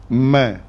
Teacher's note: angin yang keluar daripada hidung itu dengung